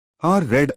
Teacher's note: R voiced approximant alveolar